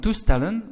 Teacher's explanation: Now in toestellen, which is devices, the last EL is stressed.